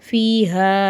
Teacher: சின்ன மது வரதுனால மூணுல இருந்து நாலு அலிஃப் வரைக்கும் நீட்டி ஓதணும்